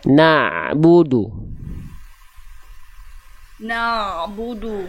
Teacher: Ain itu dilafalkan dari tengah-tenggorokan